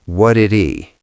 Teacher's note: flap T, and the H disappears.